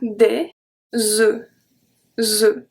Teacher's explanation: Des œufs, open sound, we don't pronounce the F at the end. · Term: open E